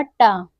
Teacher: यह मूर्धन्य से उच्चारित होता है अल्पप्राण भी है और अघोष भी है